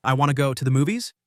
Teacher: instead of saying want to, we often say wanna